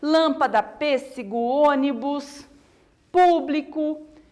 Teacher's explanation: a palavra toda que eu falar mais forte a antepenúltima ela é chamada de proparoxítona